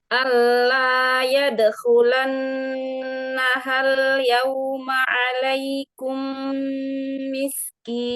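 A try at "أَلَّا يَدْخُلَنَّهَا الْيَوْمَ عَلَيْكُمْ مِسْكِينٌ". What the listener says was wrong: Sempurnakan lagi aja harfulinnya. Ya, sukun sebelumnya fathah. Alai, jangan imalah, jangan alaikum, jangan alaikum. Antara i dengan e, luruskan lagi ya, linnya ya.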